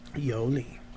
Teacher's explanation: it should be pronounced the same way as Neha it should be a third tone changed to a second tone